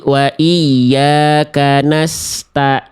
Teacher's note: itu tadi bukan ain, itu tadi hamzah. Hamzah itu di pangkal tenggorokan.